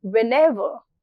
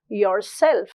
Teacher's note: The correct pronunciation is defined largely by how correctly we are using the ever or self. The stress falls on the second element.